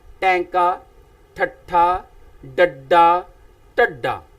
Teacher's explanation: जीभ दा सिरा जड़ा है नोक वाला सिरा वो पुठा हो जांदा है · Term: उल्ट जीबी व्यंजन